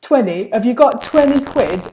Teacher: Have you got 20 quid with like a kind of a glottal stop in the middle?